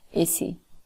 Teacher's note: The voicing of consonants in a word like easy, where the z is a voiced sound, it is devoiced, and it changes to z, changes to s